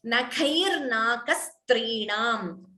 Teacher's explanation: Khai is Mahaprana. Second ka is Alpaprana.